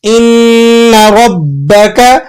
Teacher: با پر تشدید لگا ہوا ہے، سختی کے ساتھ جماؤ کے ساتھ ادا کریں گے